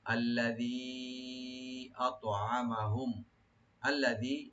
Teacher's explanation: এখানে তিন আলিফ টান মধ্যে মুনফাসিল। আত'আমাহুম, হামজাকে রাইট দিয়ে তোয়াটা একটু কলকলা করতে হবে।